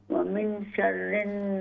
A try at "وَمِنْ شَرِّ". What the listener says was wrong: ومن، اخفا کیجئے یہاں پر، ومن شر ومن شر النفاثات في العقد ومن، اخفاء، ومن شر بس کوشش کیجئے اخفاء اپنی درست کر لیں.